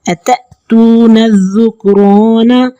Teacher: اب رو کے اوپر زبر ہے تو رو کو موٹا پڑھیں گے